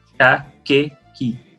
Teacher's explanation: vai ser sempre som de K, inclusive com as vogais E e I, esse som não vai mudar. Então vai ser K, Q, Ki.